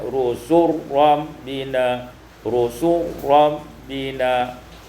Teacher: idghamul lam fil ra, diidghamkan lam pada ra